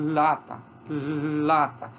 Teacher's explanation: nos alvéolos mas aí é elas são chamadas laterais Exatamente porque a língua ela fica um pouquinho mais estreita e o ar escapa pela laterais · eu bloqueio a passagem do ar no ponto nos alvéolos mas a língua fica mais estreita e o ar escapa pelas suas laterais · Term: lê